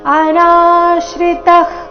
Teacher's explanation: ಅನಾಶ್ರಿತಃ ನಾ ದೀರ್ಘ ಬಂದು ಸೌಮ್ಯಾಘಾತ ವಿಸರ್ಗ ಅರ್ಧಕ ರೀತಿ.